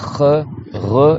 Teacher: Le maximum qu'on a, c'est re, et ça, c'est même pas dans la gorge, c'est le haut de la gorge.